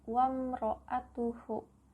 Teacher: Wamro hukumnya adalah izhar syafawi. Karena ada huruf mim mati atau sukun bertemu dengan huruf ro. Cara membacanya terang di bibir dengan mulut tertutup.